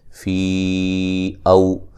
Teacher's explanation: یا مدہ کے بعد حمزہ دوسرے کلمہ کے شروع میں ہے، مد جائز ہوگی